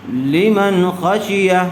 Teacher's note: بغیر غننے کے جلد اظہار کر کے پڑھیں گے